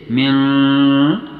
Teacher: پھر نون ساکن کی آواز میں اخفا کا عمل ہوگا، یعنی اس نون کی آواز کو قدر چھپایا کریں گے